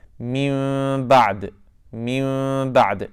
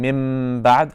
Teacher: When I make Iqlaab, my lips are barely touching.